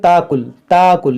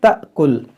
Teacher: بعض لوگ کیا پڑھتے ہیں تاکل، اس کو کھینچتے ہیں تو اس کو کھینچنا نہیں ہے، یہاں پر جھٹکا ہوگا · پیش جزم تو الف سے وہ حمزہ بن جاتا ہے، اور حمزہ جب ساکنہ ہو تو اس کو جھٹکا دے کر پڑھا جاتا ہے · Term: حمزہ ساکنہ